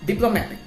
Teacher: So in the diplomatic word, we put the secondary stress in the first syllable.